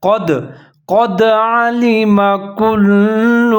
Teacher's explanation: لفظ ہے قد، قاف کو موٹا کر کے پڑھنا ہے ، آگے دال حروف قلقلہ میں سے ہے تو یہاں پر · آگے دال حروف قلقلہ میں سے ہے تو یہاں پر ہم قلقلہ کریں گے ، دال کے اوپر ساکن ہے، قد علم کل، کاف کے